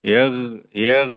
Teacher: Yang sebenarnya yang perlu itu adalah dialirkan ada rakhawah ya bukan diqalqalahkan.